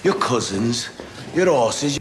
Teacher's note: And that example leads me very well onto my next consonant, which is H. And very often in Birmingham, we drop our H's, so we don't say them